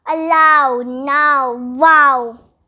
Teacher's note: ow combination has two sounds the first one is combination of long a sound and long u sound